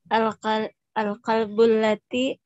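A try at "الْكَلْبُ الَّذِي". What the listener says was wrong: Lazi atau lati?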